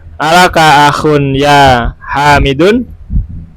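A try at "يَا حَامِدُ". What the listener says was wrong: Nggak boleh ditanwin, kan ada ya. Kalau satu kata itu nggak boleh ditanwin. misalkan ya Muhammadu, ya waladu, ya Thalibu, mabni dia.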